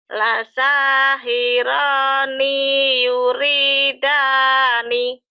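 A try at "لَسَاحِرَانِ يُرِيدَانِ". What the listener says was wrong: Ninya pendek. Ninya pendek.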